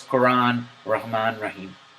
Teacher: The first extreme is the extreme of the English, in which the Ra is completely flat, the R is completely flat, and it almost has no repetition